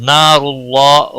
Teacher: نار اللہ را کو موٹا پڑھا جائے گا